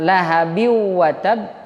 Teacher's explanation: bunyi huruf n-nya itu hilang langsung berganti dengan huruf w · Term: Idgham Bighunnah